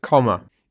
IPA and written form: 'kɒm.ə (comma)